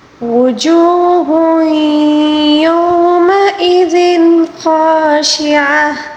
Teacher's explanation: وجوہ، اب دیکھیں یہاں پر ہا کے اوپر تنوین ہے، تنوین کے بعد اگر یا آ جائے تو اس میں ادغام محل غنہ ہوتا ہے